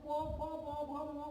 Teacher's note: এই ওষ্ঠ আর অধর পরস্পরকে স্পর্শ করে। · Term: ওষ্ঠ ধ্বনি